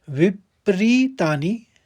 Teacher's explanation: विपरीतानि, री बड़ा है और नी छोटा है, ह्रस्व और दीर्घ